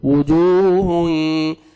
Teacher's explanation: ہونٹوں کو گول کریں گے تو وجوہ، واو مد ہے